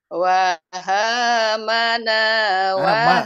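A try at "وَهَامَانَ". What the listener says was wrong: Ma masih maknya terlewat Bu, maknya terlewat. Ya, kependekan. Pelan-pelan, terlalu cepat juga.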